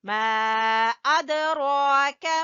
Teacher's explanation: وما ادراک، یہاں پہ مد جائز ہے اور دال کے اوپر قلقلہ کریں گے